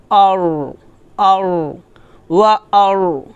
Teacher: মোটা করতে হবে জিহ্বার আগার উল্টা পিঠ জোর দিয়ে আপনি তালুতে লাগাবেন তাহলে হরফটা মোটা হবে